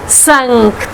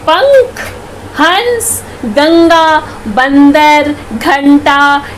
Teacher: अगर आप इसका उच्चारण करेंगे तो आपको खुद ही अनुभव होगा कि वायु जो है वो नाक से निकल रही है। ठीक है, ये है अनुस्वार।